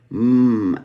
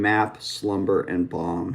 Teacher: the nasal is created in the lips